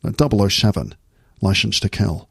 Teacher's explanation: every S sound becomes a sh sound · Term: Sean Connery accent